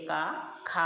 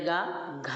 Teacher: రెండు నాలుగు మహా ప్రాణం అవుతాయి ఒకటి మూడు ఐదు అల్ప ప్రాణం అవుతాయి